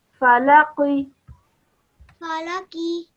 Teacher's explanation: this is a qaf and it's a thick and heavy sounding letter